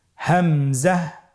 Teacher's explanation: হা হরফটি যেখান থেকে আমরা উচ্চারণ করেছি একই জায়গা থেকে আমরা হামজা হরফটি উচ্চারণ করব হলকের শুরু হতে